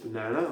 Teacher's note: accent tonique à l'échelle du mot, banana, on accentue la deuxième syllabe